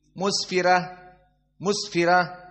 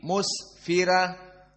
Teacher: Sin dalam keadaan sukun dinamakan dengan sifat arakhawah jaroyan asaut ada masih suara Mus berdesis